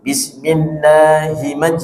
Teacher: Hinya masih gantung. Hinya jangan terlalu panjang. Bismillahi, bukan itu tapi bismillahi langsung.